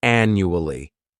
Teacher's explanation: This word has four syllables and the stress is on that first syllable. The second syllable, it's like you're just saying that letter U.